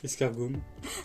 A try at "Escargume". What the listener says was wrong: T'as un souci avec les U aujourd'hui.